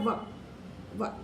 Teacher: व में दंत भी लग रहे हैं और ओष्ठ भी लग रहा है।